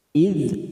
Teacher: ada huruf dzal sukun, hati-hati jangan dipantulkan karena bukan qalqalah, maka kita tahan